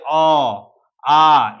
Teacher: कंठ का बात करें तो गला से जहां उच्चारण किया जाता है, जैसे अ, आ, इसमें गला से बोला जाता है, बोलकर भी हम लोग जान सकते हैं इसको।